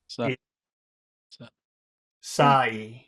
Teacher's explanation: So the vowel sound is 2 sounds. It's ah and then e. I. Okay.